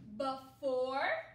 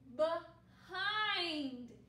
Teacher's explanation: sound with all these tricky words that begin with b e sometimes people will say the schwa sound for e instead